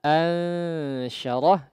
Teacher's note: Ikhfa pada ansyarah tadi ditipiskan kondisinya.